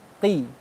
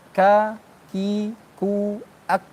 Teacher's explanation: Jadi qaf ini belakang, kalau kaf ini yang lebih di depan.